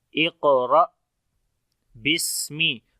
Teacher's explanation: تو پڑھتے ہیں اقرأ اق، ٹھیک ہے، قلقلہ بھی کریں گے، کمزور ہوگا تھوڑا۔ اقرأ بسمی، سین کے اندر صفت ہمس ہوگی، سانس جاری ہوگا، کمزوری آئے گی اس کے اندر